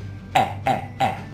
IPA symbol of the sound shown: e